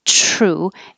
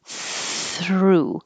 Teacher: your tongue is behind the teeth and here true instead of between the teeth through so it does take more physical time through than just true